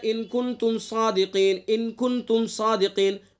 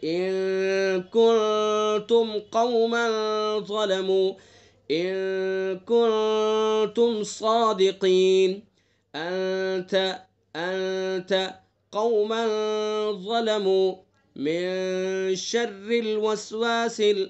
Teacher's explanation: قاعدہ ہمیں معلوم ہے تو قاعدے کے مطابق اس میں اخفا کر کے غنہ کر کے تب آگے چلیں گے